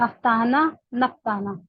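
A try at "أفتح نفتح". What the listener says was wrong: ना ना ना, अफ्तहु नफ्तहु। हाँ, ये गलती आपने की थी पहले भी। ये आखिरी के जो 13th और 14th सीगा है ना, इसमें नून नहीं लाना है ना।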